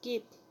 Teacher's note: The phoneme G has velar articulation. That is, it produces when the tongue touches the veil or velar zone. It has an occlusive articulation mode.